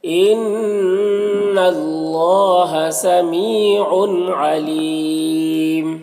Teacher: علیم، یہاں پر یا مدہ ہے. وقف کی صورت میں میم کی جو 2 پیش کی تنوین ہے سکون سے بدل جائے گا تو پھر مد عارض وقفی ہوگا · نون مشدد غنہ ہوگا اور اللہ کے لام سے پہلے زبر ہے تو اللہ کے لام کو پر پڑھیں گے، کھڑا زبر ہے، ایک الف کے برابر کھینچیں گے.